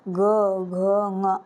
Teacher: जैसे बोलेंगे ग घ ऐसे बोलेंगे तो गले में थोड़ा कंपन होता है। तो इसी को घोष वर्ण कहते हैं।